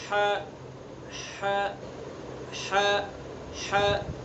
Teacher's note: حلق کا جو بیچ والا حصہ ہے وہاں سے ح کو ادا کریں گے ح. آپ حلق کے بیچ میں اپنی انگلی رکھیں اور پھر ادا کریں ح ح ح ح.